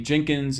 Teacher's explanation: I believe this emerged in Tennessee, kind of in the Mid-South in the late 1800s, but where the contrast between two vowels like I and E was lost in prenasal stop context. The idea is that those vowels in that context were becoming nasalized because of the nasal that followed them.